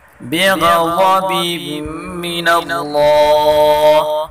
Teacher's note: غین اللہ دونوں کو پر پڑھیں گے اور اللہ کے نام کو بھی پر پڑھیں گے۔